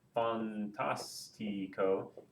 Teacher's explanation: if I count backwards from the end uh 1 2 3 the stress is over the third syllable